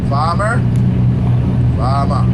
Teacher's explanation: we would chop off the ER and we'll just add an A